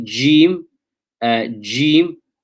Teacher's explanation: tongue is almost uh raised it's it's curved and raised and the middle of the tongue what we call wasan impacts the hard upper palate of the mouth so that is jim okay and then you've got sheen and